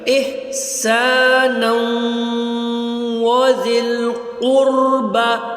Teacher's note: یہاں پر آپ نے زال کو زبان کی نوک سے ادا کرنا ہے اور قاف کو حلق سے نکالنا ہے · اب یہاں پر آپ احسانن نون 2 زبر نن ہے، لیکن اس کے بعد جو لفظ ہے وہ واو ہے، تو واو پہ تشدید آ جاتی ہے، یہ اب غور کریں اس کو، تو واو پہ جب تشدید آ گئی تو اس واو کو ہم نون کے ساتھ ملائیں گے، ٹھیک ہے، تو جب ہم ملا کے اس کو پڑھیں گے تو یہ بن جائے گا لفظ احسانا وذی القربى۔